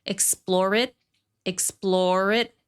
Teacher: Lots of consonant to vowel linking